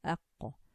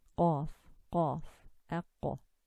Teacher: the deep part of the tongue, when returned to touch the soft palate, produces qaf. Whatever lies at the back here, it touches this and this blue area here, and this touches the back, and we produce the qaf as aqqa.